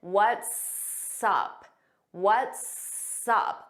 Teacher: notice it sounds like one word and you hear that s on what's and sup. We put it in front of up.